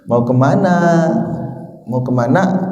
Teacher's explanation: kalau yang dari Sunda Biasanya banyak hamzahnya yang sukun itu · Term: Hamzah sukun